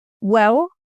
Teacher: I probably say the L like a W, like a vowel sound. And that's like a classic feature of Cockney.